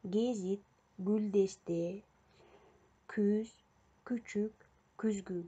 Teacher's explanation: к, г тыбыштары ичке үндүүлөр менен келгенде сөз арасында алар ичкерип айтылат жана ошондой болуп кулакка угулат.